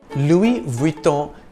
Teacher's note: the S is silent in the first name Louis